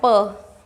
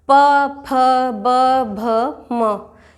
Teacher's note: प कैसे बोला जाएगा? होठों की सहायता से। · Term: प वर्ग